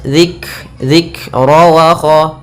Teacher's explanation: Ketika melafalkan kaf sukun itu usahakan ada hamznya, ada sifat mengalirnya nafas